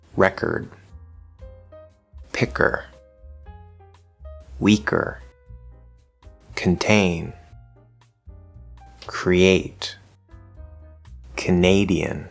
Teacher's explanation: syllable then it will be weak or soft in other words unaspirated meaning that we don't want to hear a bunch of air behind the sound